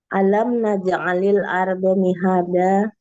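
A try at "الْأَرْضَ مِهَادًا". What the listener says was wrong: Tadi kan diulang 3 kali, do-nya masih 2 harokat ya.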